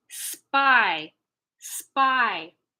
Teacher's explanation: well it kind of sounds like a b pi spy spy the p in spy doesn't have any aspiration because the S takes it away